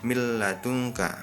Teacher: hukum bacaannya tidak boleh berdengung tapi wajib meleburkan Nun atau tanwin ke dalam huruf sesudahnya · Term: Bila Ghunnah